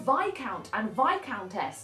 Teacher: Notice we don't say the S